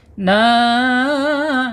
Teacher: alirannya harus melalui rongga mulut saja ya tidak melalui tidak mampir ke hidung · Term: mad th'i